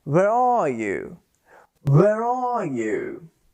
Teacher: we join our words by pronouncing the r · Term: linking r